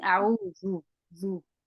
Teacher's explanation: your dal is becoming heavy